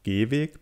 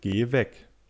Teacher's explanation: Gehweg wird auf der ersten Silbe betont, Geh weg auf der letzten. · unterscheidet sich die Länge, die Quantität des Vokals. Das Substantiv "Weg" würde man so transkribieren, also mit dem langen, gespannten [e:].